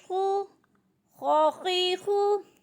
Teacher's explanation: خا بھی موٹے حروف میں سے ہے، اس کو جب ادا کریں گے ہونٹوں کو گول کر کے پڑھیں گے، موٹا کر کے ادا کریں گے